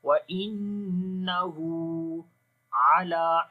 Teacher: عین کو گلے کے درمیان والے حصے سے، لام کو لمبا کریں گے، کھڑی زبر ہے